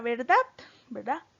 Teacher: verdad tiene el acento la sílaba tónica en la última sílaba